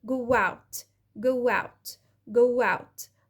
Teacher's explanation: طلعت صوت و sound وخفيت صوت الهمزة أو الجلوتال ستوب اللي هنا